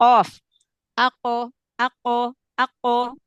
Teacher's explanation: jadi syiddah dulu di makhrajnya baru Qalqalah